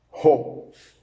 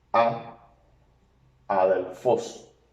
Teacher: Tiene espíritu suave y por tanto no se pronuncia la aspiración, así que la alfa suena con un sonido de alfa puro